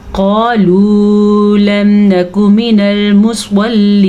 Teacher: قالوا موٹا قاف ہے تو اس کو موٹے پر کر کے پڑھیں گے. واو مدہ ادا کریں گے.